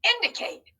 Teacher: anyone hear a schwa sound in that word i did too right in our second syllable our middle syllable